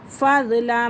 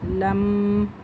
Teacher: لام کے فوراً بعد میم مشدد آ رہا ہے، اور میم مشدد اپنے پہلے والے حرف کے ساتھ مل کر پڑھا جاتا ہے۔